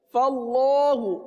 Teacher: ہا پیش ہو، فاللہ، فا باریک رہے گا، اللہ عز و جل کے لام کو صرف پر پڑھیں گے